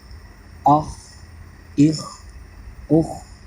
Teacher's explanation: اس کا مخرج جیسا کہ آپ کو پہلے بھی معلوم ہے کہ حلق کے اوپر والے حصے سے ادا ہوگا